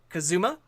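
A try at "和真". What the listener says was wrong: Kazuma. No, you're mispronouncing the U.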